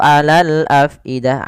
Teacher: Ain itu makhrajnya, tempat keluarnya adalah tenggorokan tengah. Dan ya hati-hati jangan sampai masuk ke rongga hidung ya.